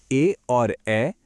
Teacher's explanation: ए और ए कंठ और तालू दोनों से बोले जाते हैं